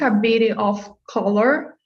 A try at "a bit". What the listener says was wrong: So be careful, you're saying bitty. It's a bit. So the T kind of dies.